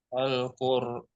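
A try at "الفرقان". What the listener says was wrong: ini titiknya satu Pak ya. Al-fur.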